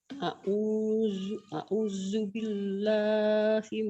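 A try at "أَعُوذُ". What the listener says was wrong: Jangan a'usu, a'udzu. Jangan terlalu rapuh ya. A'udzu, zal. Kalau orang Sunda kan keras a'udu. Kalau orang Betawi a'usu, a'uju. Ini a'udzu, zal. A'udzu.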